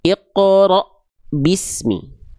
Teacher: Hamzah itu, Teman-teman, dia punya sifat namanya syiddah ya. Syiddah itu artinya tertahan suara.